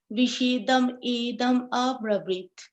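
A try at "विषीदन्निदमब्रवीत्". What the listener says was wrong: So this is like there are two N's over here, right? So when you pronounce it, you Vishidan, you'll go like that, right? Vishidan idam abravi, like that.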